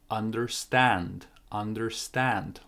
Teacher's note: more stress on the second part